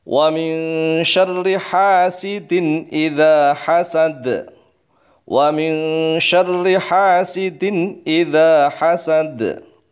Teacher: nun mati ketemu shin. Ikhfa, disamarkan condong kepada huruf shin.